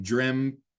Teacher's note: In some dialects of English, actually, you'll hear people inserting a P into dreamt